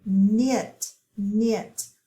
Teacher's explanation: we don't hear that k we just hear the n